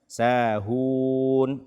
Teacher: betul-betul dibaca dengan memonyongkan dua bibir kita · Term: ha dhammah